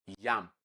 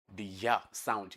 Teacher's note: we have only one palatal sound in the English language, and that's the one you have in yam. The ya sound.